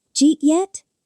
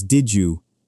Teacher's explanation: It's just how the sounds naturally flow when you speak at a normal speed. The D in did meets the Y in you and becomes a J sound. Did you becomes did you, and then we drop the first part and get Jew or J.